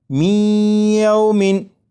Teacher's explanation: یہ جو آواز ہے می ای، یہی ادغام ہو رہا ہے، اور ادغام اس طرح کے نون ساکن کو یا میں شامل کر کے پڑھا جا رہا ہے